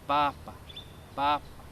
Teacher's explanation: always has the emphasis on the ba and not the pa at the end. Yolŋu, Yolŋu Matha, always emphasizing the first part of the word. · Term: emphasize the first syllable